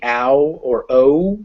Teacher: and you can feel it when you say ow or o you should feel your lips kind of close up at the end as they go to make that u sound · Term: double vowels